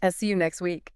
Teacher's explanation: The t doesn't stand a chance. >> None. It is instantly deleted.